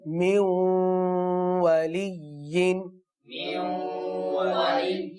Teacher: پڑھے ہیں اور یہاں پر ادغام کا قاعدہ موجود ہے کیونکہ نون ساکن کے بعد حروف یرملون ہے تو غنہ بھی ہم نے کیا